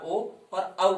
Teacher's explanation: कंठोष्ठ से हमारा ओ और औ बोला जाता है।